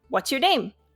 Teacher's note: my pitch goes up at the end of the sentence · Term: intonation